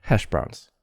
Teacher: so hash has more stress than browns hash browns and voiced the s becomes voiced on browns